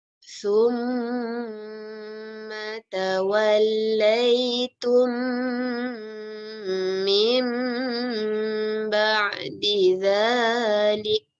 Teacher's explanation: Jadi memang mim ni, mim ba'di ni memang dia tutup dia lebih kurang sama dengan yang mim mati. Kerana nun tu tukar jadi mim. Jadi memang mulut kita pun tertutup kerana bacanya seperti mim.